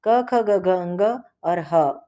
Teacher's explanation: उच्चारण स्थान कंठ, गले से क, ख, ग, घ, अंग और ह उच्चरित ध्वनि है